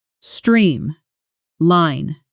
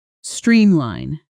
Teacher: The stress is even and clear on both parts of the word.